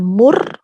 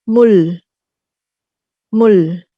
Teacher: kalau dia mendahului vokal, dia akan terdengar seperti R. Tapi dia ada di akhir. Di akhir menjadi L.